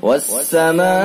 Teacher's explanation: تو اس میں مد متصل ہے، یہ 2 الف کم سے کم کھینچا جائے گا، زیادہ سے زیادہ 4 الف کھینچا جائے گا بروایت حفص۔